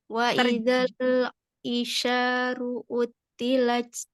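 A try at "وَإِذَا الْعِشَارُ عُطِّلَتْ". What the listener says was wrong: Karena ini bukan hamzah tapi ain, ya. Jadi wa idzal aisyaru utilat.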